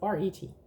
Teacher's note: Note that our Rs are in the throat.